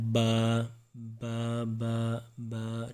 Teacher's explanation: اس کے بعد ہے دونوں ہونٹ بند ہوتے اور ان سے با میم اور واو ادا ہوگا. جب بند ہونٹوں کے گیلے حصے سے، بند ہونٹوں کے اندر والے حصے سے، گیلا حصہ اندر والا ہوتا ہے، تو وہاں سے ادا ہوتا ہے با با با با.